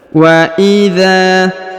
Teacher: hudza dipanjangkan 2 harokat karena di depannya terdapat alif